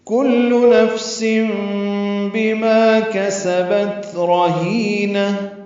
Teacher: سم میں اقلاب ہے، تنوین کے بعد با آنے کی وجہ سے نفسم پڑھیں گے، سن کی جگہ سم پڑھیں گے ، بما معرف مدہ ہے، کسبت کاف سین جلدی پڑھیں گے،